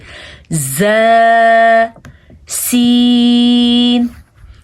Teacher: ز ز اس میں تھوڑی زا اور سین یہ دونوں ایک ہی جگہ سے نکلتے ہیں اور اس میں تھوڑی سیٹی کی آواز ہوتی ہے